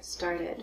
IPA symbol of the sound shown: ɪd